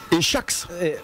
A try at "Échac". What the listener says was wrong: Échac, sans S.